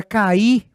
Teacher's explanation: Em cai, o A é vogal, o I é semivogal. Só que na palavra cair, você vai perceber que nós temos duas vogais e não semivogais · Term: hiato